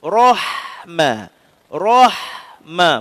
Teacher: Ra tafkhim dari atas. Ra tebal huruf ha tak tebal.